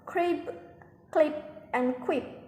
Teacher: aspiration also takes place even with an intervening consonant